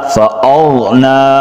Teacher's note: غین کو حلق سے اور یہ موٹے حروف میں سے بھی ہے، حروف حلقی میں سے بھی ہے، موٹا کر کے پڑھیں گے. حمزہ مجہورہ شدیدہ فأغنا.